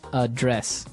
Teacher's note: the verb address has the the stress on the second syllable